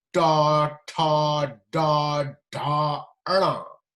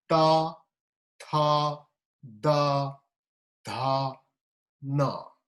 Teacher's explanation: this is retroflex, and you curl your tongue and touch the hard palate to produce these sounds.